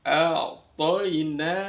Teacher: Lamnya dibaca jelas, cukup sempurna bunyi L baru ke yang lain. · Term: idhar qamariyah